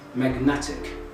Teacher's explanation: when we added ic the suffix ic the stress moved to the second syllable and it became magnetic